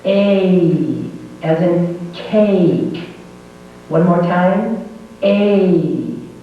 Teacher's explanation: The first sound is its long sound, and this is a diphthong. Make sure you make the diphthong.